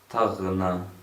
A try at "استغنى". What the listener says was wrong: long vowel at the end.